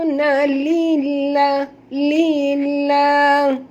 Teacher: Lillah di sini lam pada lafaz jalalah dibaca tipis kerana lam ini berbaris di bawah. Jangan baca lillah, itu dah tebal ya.